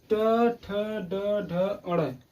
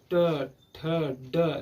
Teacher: मूर्धा भाग अर्थात जो हमारे जिह्वा है, जिह्वा पीछे की तरफ मुड़ करके हमारे तालु के पीछे मूर्धा वाले भाग में टच होती है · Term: मूर्धन्य